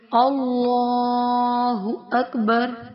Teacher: کیا کیا جاتا ہے کہ یہاں پہ زبر ہے اللہ کے لام سے پہلے، اللہ کا لام موٹا پڑھا جائے گا اور کھڑا زبر کو ایک الف کی مقدار کے برابر کھینچ کر پڑھا جائے گا